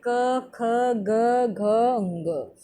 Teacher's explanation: कंठ वाला कौन सा है कंठ वाला है क ख ग घ ंग